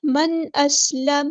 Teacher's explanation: من اسلم اظہار ہو رہا ہے. حمزہ کی آواز واضح ادا کرنا ہے, حمزہ قطعی ہے. سین کسی کی واضح ادا کرنی ہے, سین ساکن کو ہلانا نہیں ہے.